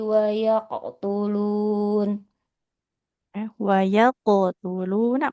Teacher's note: huruf qalqalah qofnya pastikan dia tebal ya.